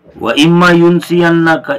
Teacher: ان میں یہ نون ہے اس کو میم سے بدلا، میم کا میم میں ادغام ہو گیا، اس طرح اما ہو گیا